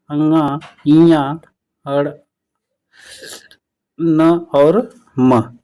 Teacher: नासिक्य व्यंजन यानी जो नाक से बोला जाता है